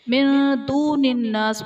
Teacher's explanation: من دون الناس میں نون ساکن کے بعد حروف اخفاء میں سے دال ہے تو یہاں پر اخفاء کا قاعدہ ہوگا، یعنی نون ساکن میں ہم غنہ کر کے پڑھیں گے۔